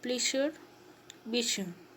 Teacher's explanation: post-alveolar articulation point, that is, the tongue touches the back of the alveoli near the palate